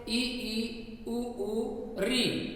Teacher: मुख न के बराबर खुलता है, कम से कम खुलता है, इसी कारण इनको कहते हैं संवृत्त।